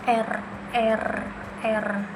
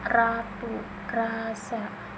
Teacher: ujung lidah bergetar di alveolar ridge